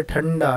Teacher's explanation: ठंडा जब आप कहोगे तो हमारी ज़ुबान वहाँ जाकर मूर्धा को टच करेंगे। ड से डमरू, डमरू कहने पर हमारी ज़ुबान फिर इस तरह से बेंड होकर क्या करेगी, इस मूर्धा को जाकर टच करेगी। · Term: मूर्धन्य वर्ण